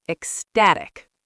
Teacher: Ecstatic. The stress is on the second syllable